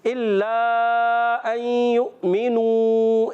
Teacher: युमिनू वाव मद्दा है, अय्युमिनू तो खींचना है.